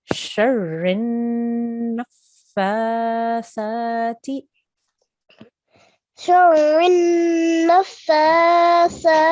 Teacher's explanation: make sure that we can hear that we're joining the noon to the fa